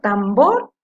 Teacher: Acá, por ejemplo, tambor, dijimos que la sílaba tónica es la segunda, bor